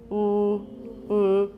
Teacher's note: That's one kind of a velarized L, but it's got lip rounding. Usually we don't have lip rounding.